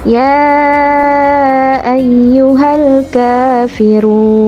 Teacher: Alif lam ta'rif dibaca jelas karena diikuti dengan huruf qamariyah yaitu huruf kaf. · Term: alif lam qamariyah